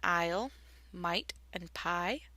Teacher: the I is what we call a diphthong. It's a combination of two vowel sounds. It starts with the A.